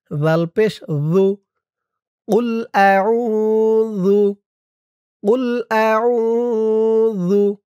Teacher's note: জিহ্বার মাথা উপরের দাঁতের মাথার সাথে লাগবে জালের উচ্চারণ করার সময়।